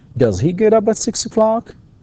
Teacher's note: في نهاية السؤال يكون فيه rising intonation